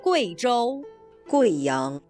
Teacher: In the name of this province and its capital the u + i is pronounced way not we.